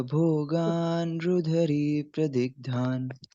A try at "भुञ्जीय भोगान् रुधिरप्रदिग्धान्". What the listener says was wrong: भुंजीय भोगान रुधिर, री नहीं, रुधिर प्रदिग्धान।